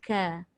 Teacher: Kaf bahagian yang kedua iaitu pangkal lidah juga tapi di hadapan sedikit berbanding tempat keluar qaf. Maka dia jadi ka.